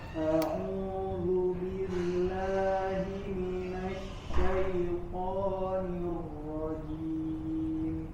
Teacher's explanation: huruf ro-nya harus tetap mengalir, jangan nirroh, jangan ada jeda